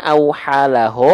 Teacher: huruf-huruf tebal itu dibaca dengan vokal o